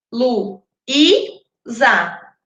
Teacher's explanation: A sílaba tônica é a segunda de três.